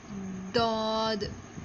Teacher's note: زبان کا حافہ کروٹ جب دائیں یا بائیں جانب اوپر والی 5 داڑوں سے ملے تو یہ حرف ادا ہوتا ہے